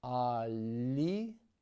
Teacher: The first L is soft. The second L is hard.